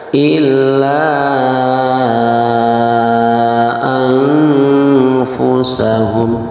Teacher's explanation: Jadi illa la-nya di situ panjangnya adalah 2 sampai 6 harokat, hukumnya adalah mad jaiz munfasil. · Cara membacanya disamarkannya itu dengan didengungkan di rongga hidung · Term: ikhfa